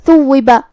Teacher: تھا کو ہم زبان کے سر اور اوپر والے دانتوں کے اندرونی کناروں سے ادا کریں گے